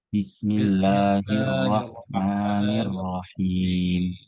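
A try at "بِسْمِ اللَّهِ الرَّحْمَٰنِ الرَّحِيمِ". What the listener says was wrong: Nah, lah nggak perlu panjang-panjang, bukan Bismillahirrahmanirrahim kepanjangan, cukup dua saja karena teorinya itu dua ya. Matobi'i. Bismillahir lahirrah. Ha bersih, bukan kha tapi ha. Irrahmanirrahim. Him bersih. Mata ini mim ya. Mim. Mim. Belakang-belakang kita empat tawasud ya. Boleh enam sebenarnya juga boleh.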